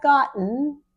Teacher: once the tongue is up for the T we leave it there and then just turn to vibrating